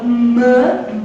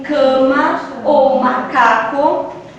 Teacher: a nasal labial mã como em cama ou macaco